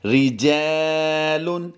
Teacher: جیم الف زبر جا میں ہم نے لمبا کر کے پڑھنا ہے